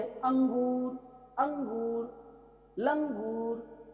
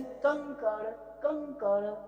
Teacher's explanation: तो आप देख रहे हैं जो साउंड है आपके मुंह से ना निकल के नाक से निकल रहा, सॉरी नाक से निकल रहा है। जो अनुस्वार है इसका साउंड कहाँ से निकलता है? नाक से।